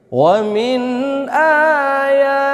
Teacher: pada ayat ini wamin ayatihi kita jumpai mad jaiz ya. Mad jaiz ee memiliki panjang empat harakat